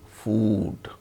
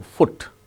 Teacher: when the word ends with D sound, then it is elongated, food. When the word ends with T sound, it is not elongated.